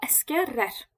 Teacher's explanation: lar şəkilçisi tələffüz olunarkən rar formasında da ola bilər